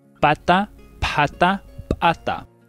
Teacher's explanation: the voiceless bilabial plosives of Cusco Quechua